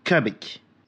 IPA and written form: kʌbɪk (Cubic)